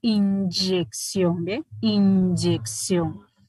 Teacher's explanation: son sonoros por eso da como resultado un sonido sonoro y hay una combinación de oclusión y de fricción